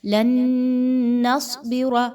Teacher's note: یہاں پر ادغام ود غنہ کیجئے، آپ نے یہاں پر ناک میں آواز نون کی لے کر جانی ہے اور 1 الف کے برابر رکنا بھی ہے۔ لن نصبر، صاد حروف مستعلیہ میں سے ہے، موٹا پڑھے جانے والا حرف ہے، اس لیے اس کو خوب موٹا کر کے پڑھیے